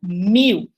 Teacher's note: A gente não usa o L mais, a gente usa uma vogal, ou uma que a gente chama em linguística de semivogal, que é uma vogal mais fraquinha, tá?